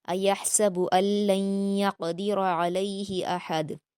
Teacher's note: اور احد میں قلقلہ کریں گے لاسٹ میں